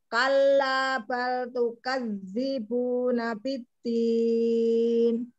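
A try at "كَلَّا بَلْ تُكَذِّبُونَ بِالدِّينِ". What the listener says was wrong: Jangan diputus di balnya. Kalla bal tukadzibuna biddin. Tukadzibuna biddin. Kalla bal tukadzibuna biddin. Sama huruf yang bertasydid.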